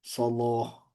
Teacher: huruf lam itu dibaca tafkhim, tidak hanya pada lafaz Allah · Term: Taglid lam